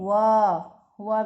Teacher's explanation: फिर दंतोष्ठ, जिसमें दांत और होठ, इन दो मतलब शरीर के भागों का उपयोग होता है, जैसे व में दांत और हमारे होठ, इन दोनों का साथ में उपयोग होता है